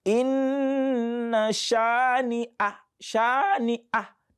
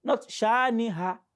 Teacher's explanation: And the reason for that is because they both come from the throat, both hamza and ha. In fact, they come from the same point of the throat, both hamza and ha.